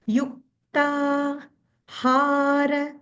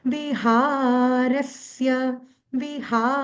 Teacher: அது ஹா தொண்டைல இருந்து வரணும்